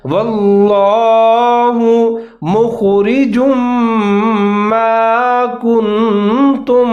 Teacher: خا ساکن ہے، اس کو موٹا کر کے پڑھنا ہے۔ آگے جیم کے اوپر تنوین دو پیش ہے، میم مشدد ہے تو جیم اور میم دونوں ملا کر پڑھیں گے اور یہاں پر ادغام کریں گے غنّے کے ساتھ۔